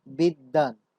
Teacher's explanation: এখানে কিন্তু 2টি দ নেই, কিন্তু এই ব আগের ধ্বনিটিকে দকে দ্বিত্ব করে দিয়েছে